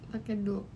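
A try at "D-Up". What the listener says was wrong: Nulisnya duk tapi dibacanya. di up.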